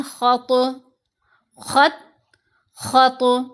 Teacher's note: قلقلہ ہے ہلتی ہوئی آواز، ارتعاش، جنبش کا پیدا ہونا آواز میں، ہلنا آواز کا۔ پھر جیسے آپ خالی کمرے میں بولتے ہو نا تو آپ کی آواز آپ کو لگتا ہے گونج رہی ہے، ٹکرا کر واپس آ رہی ہے دیواروں سے، ایسے ہی قلقلہ کرتے ہوئے بھی آواز پلٹتی ہے، گونج سی پیدا ہوگی۔